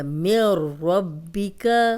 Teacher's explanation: ملدنہ من ربک، اب اس میں میم زیر را، شد والا حرف پیچھے زیر، تو را سے ملائیں گے، نون ڈیڈ ہو جائے گا. من ربک، را کو موٹا پڑھیں گے کیونکہ اس پہ زبر ہے